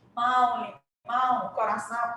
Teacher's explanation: sai parcialmente pelo nariz, parcialmente pela boca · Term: som nasal